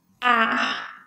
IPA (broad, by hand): æ